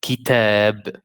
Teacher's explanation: See the ta here was fatha, and we have alif after, so this is a longer fatha.